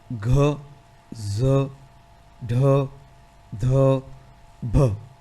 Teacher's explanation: ઘોષ મહાપ્રાણમાં આપણે પ્રાણવાયુનો પણ વધારે ઉપયોગ કરીશું અને ઘોષનો એટલે કે પડઘાનો પણ એમાં અવાજ આવશે.